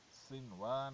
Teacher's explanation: سین، صاد اور زا یہ حروف صفیر میں سے ہیں، اسے سخت آواز کی وجہ سے سیٹی سی نکالنی چاہیے